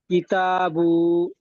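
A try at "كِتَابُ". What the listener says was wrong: বুটা টান হবে না, হারকাত। জবর খাড়া, উপরে আসলে খাড়া জবর, নিচে আসলে খাড়া জের।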